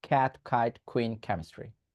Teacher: ক্যাট কাইট একটা ধাক্কা দিয়ে বলছি · একটা ধাক্কা দিয়ে বলছি কাইট, কুইন, কেমিস্ট্রি, কেমিস্ট্রি, একটা ধাক্কা দিচ্ছি।